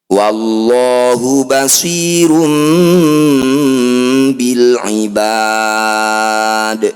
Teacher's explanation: dumah tanwin bertemu ba disebut bacaan iqlab cara bacanya bunyi dumah tanwin dengungkan dua harakat ketika dengung lisan kita rapat wallahu basirum Bil Ibad innalladzina yakfuruna